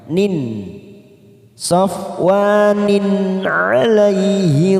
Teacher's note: Ini termasuk bacaan idhar halki yang dibaca jelas tanpa mendengung, tidak ada warnanya.